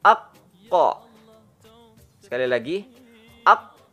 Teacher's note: pangkal lidah paling belakang dengan posisi menempel pada langit-langit bagian yang lunak paling belakang setelah tenggorokan keluar darinya huruf qof